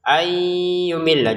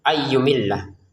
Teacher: nun sukun disisipkan ke dalam 'ya ' lalu dinasalkan, "ayyumilla". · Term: bunyi sengau